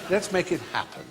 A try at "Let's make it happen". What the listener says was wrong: Let's make it happen. There's no H on happen